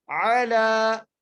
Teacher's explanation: عَلَى, یہاں پر عین ہے اور لام کے اوپر کھڑی زبر ہے, اس لیے لام کو ایک الف کی مقدار کھینچ کے پڑھنا ہے